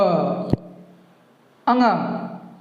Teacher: nasal sound मतलब कि नाक से अधिक ध्वनि निकलती है, नाक पर ज़्यादा जोर पड़ता है